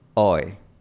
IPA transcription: oɪ